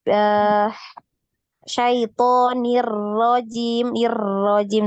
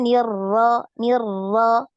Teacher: Ingat jangan terlalu banyak takrir ya jangan banyak getarannya